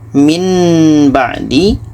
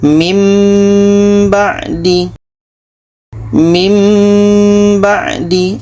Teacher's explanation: bunyi nun kita tukar kepada bunyi mim. Jadi itulah pembahasan tentang cara mudah paham iqlab yang kesimpulannya adalah bunyi tanwin ini kita tukar kepada bunyi mim.